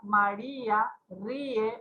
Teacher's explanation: vocal cerrada tónica más vocal abierta átona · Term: hiatos